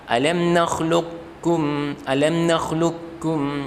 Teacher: Qafnya tidak dibaca qalqalah tapi langsung masuk ke huruf kaf. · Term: mutaqarribai